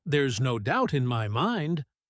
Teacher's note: The word doubt usually gets that little push of energy because it's the most important word for understanding the meaning · In there's no doubt in my mind, the word doubt usually gets that little push of energy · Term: extra stress